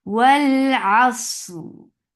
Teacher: And then there is raw, which is being which has sukoon because of this waqf, and you are making this raw heavy now because with this sukoon because it has fatha before it. Asr, and you're giving tawassut on raw.